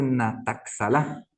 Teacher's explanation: Pero en realidad se escribe, ¿no es cierto?, con la X, pero se pronuncia de otra manera. La palabra X se pronuncia como una G glotal